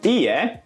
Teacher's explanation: he said い い え with a high, low, low pitch pattern, but the correct pitch pattern of standard Japanese is い い え low, high, high. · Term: wrong pitch accent